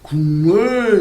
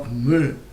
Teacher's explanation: 기역과 미음이 만났는데 뒤에 있는 미음은 그대로지만 앞에 있는 기역이 이응으로 변했네요. 이렇게 자음끼리 만나서 자음끼리 만나서 소리가 변하는 현상을 뭐라고 얘기하냐면 자음동화라고 합니다.